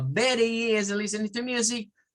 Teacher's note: se elimina el sonido normal de una T y se reemplaza por algo que a veces suena, para algunos suena como una R y una R suave y para otros suena como una D